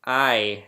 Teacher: you see the ah with the second and third bands far apart turn into the e with the second and third bands closer together. And that really has to do with where your tongue is in your mouth.